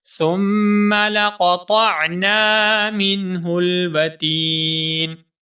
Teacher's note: ثم میں میم مشدد ہے، یہاں پر غنہ ہوگا